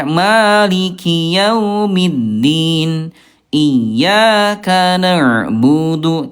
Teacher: hati-hati huruf dal tidak ada udara ya. Maiki yaumiddin iyyaka na'budu tidak ada udara huruf dal ya.